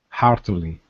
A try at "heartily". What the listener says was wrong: Okay, pronounce the H there instead of heartily. Heartily.